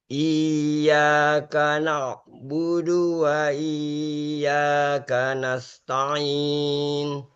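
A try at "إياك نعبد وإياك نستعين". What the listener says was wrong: Jangan ditahan ya. Wa iya, jangan ditahan. Huruf ya itu nggak perlu ditahan, hanya sekedar ditekan alias naber ya. Kemudian dibaca dengan tidak terputus ya-nya. Iyyaka na'budu wa iyyaka nasta'in.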